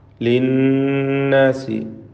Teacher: നൂൻ മുഷദ്ദദ, ശ്രദ്ധ നൽകപ്പെട്ട നൂനിനെ മണിക്കുക.